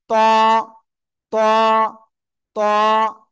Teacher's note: ওই জিহ্বার আগা, সামনের উপরে দুই দাঁতের গোড়ায় লাগান।